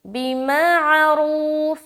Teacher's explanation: रू को मोटा करते हुए खींचेंगे और वाव मद्दा करेंगे